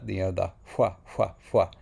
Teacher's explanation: Those are the voiceless W's at the end.